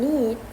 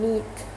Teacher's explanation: the E sound in need is longer than in neat